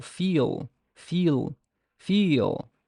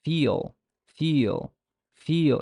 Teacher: the velarized quality of the English L is especially noticeable at the end of words.